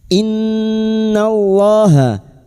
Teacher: Innallaha nun yang bertasdid gunah musyadadah kita dengungkan selama tiga harakat. Innallaha lam jalalah yang didahului fathah dibaca tafkhim.